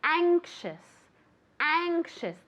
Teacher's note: The A is very nasal